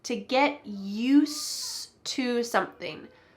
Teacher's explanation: I said use but there's actually a d at the end of that word get used to but we don't say the D